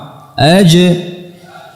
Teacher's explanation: Aj, ja, aj. Dan perhatikan makhrajnya dia rapat. Aj, tidak ada celah sedikit pun. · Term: jim